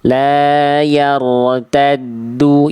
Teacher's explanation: yang tebal hanya huruf ro-nya saja